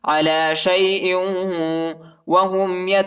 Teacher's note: حمزہ کو واو کے ساتھ ملائیں گے اور غنہ کریں گے